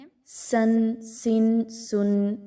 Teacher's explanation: سین، اس میں سیٹی کی آواز کو لائیں گے، باریکی کے ساتھ اس کو پڑھیں گے